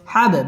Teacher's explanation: বা কলকলার হরফ ধাক্কা দিয়ে পড়তে হবে